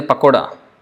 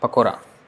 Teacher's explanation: So Poribe, or sometimes it is like Poribe, like Pakora, in Hindi they say Pakoda, but it's pronounced as Pakora in Bengali, Pakora. So sometimes it can become D sound, Alright, so these are some of the examples.